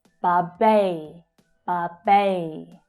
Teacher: So there's a long vowel sound in the first syllable but the stress is on the second syllable.